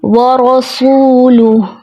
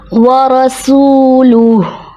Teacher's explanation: یہاں جو ہوتا ہے رو پہ زبر ہے، رو کو موٹا پڑھتے ہیں، تو رو کو موٹا کرنے میں سین بھی موٹا ہو جاتا ہے، جیسے ورسولہ جو کہ درست ادائیگی نہیں ہے. سین کو باریک سیٹی کے ساتھ پڑھا جاتا ہے اور رو کی موٹائی برقرار رکھتے ہوئے